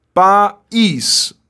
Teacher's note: esse i é forte e está formando hiato com a vogal A. O i é forte e é vogal, o a também é vogal.